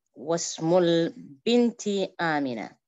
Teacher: When preceded by a word that initial I is dropped in pronunciation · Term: hamzatul wasl